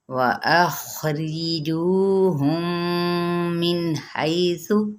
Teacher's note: میم ساکن اور آگے میم متحرک ہے تو پھر یہاں پہ کون سا قاعدہ ہوگا؟ ادغام شفوی